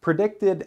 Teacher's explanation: predicted ends with the D sound and an extra syllable